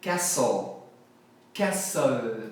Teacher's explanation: Aqui eu não falo o T, o som é castle.